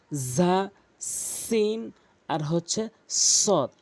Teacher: এই 3টি হরফ সেম উচ্চারণ হয় জিহ্বার আগা উপরের নিচে দুই দাঁতের আগা থেকে।